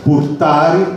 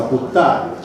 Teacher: la forte assimilazione del nesso rt , per esempio purtari diventa puttari, tipico del siciliano, messinese. E